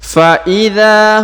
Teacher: maka huruf dza dipanjangkan dua harakat ya